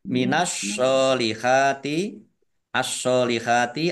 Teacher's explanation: alif lam samsiyah, karena tidak dibaca, langsung masuk ke huruf berikutnya, yaitu shot, ditandai shotnya ada tasdidnya.